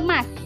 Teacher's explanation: Ini posisi lidahnya madya atas, bagian lidah bergerak tengah, dengan posisi mulutnya semi tertutup.